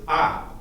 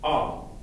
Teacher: An a vowel in German is a. Okay, one's brighter, the Italian's brighter, and the German's darker